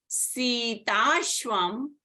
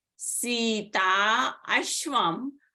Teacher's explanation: So the sandhi was between the long A of Sita and the beginning A of Ashvam. So the long A of Sita and A of Ashvam together became a long A